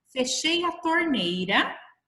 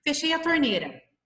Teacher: O I, ele fica escondido se eu pronuncio muito baixo, muito rápido